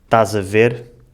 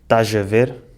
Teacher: usar o som G em vez do som Z para ligar palavras que acabam em S com palavras que começam com vogal. Em vez de dizerem estás a ver, dizem estás a ver.